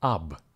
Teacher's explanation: the first syllable OB in a spoken Russian is actually pronounced as AB